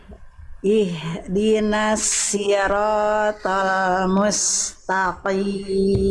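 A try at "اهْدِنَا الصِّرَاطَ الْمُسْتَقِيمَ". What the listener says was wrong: Hak besarnya sudah bagus, tinggal terus dijaga ya Bunda ya, hak besarnya ya. Dijaga hak besarnya ketika sukun, jangan sampai memantul, jangan jadi hak kecil. Lalu huruf sodnya jangan si.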